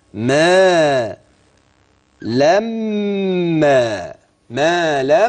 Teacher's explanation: النون دي تحولت الى مم الميم دي برض ميم ساكنه دخلت في هذه الميم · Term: ادغام